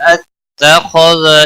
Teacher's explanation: شاء اتخذ خا حروف مستعلیہ میں سے پر پڑا جائے گا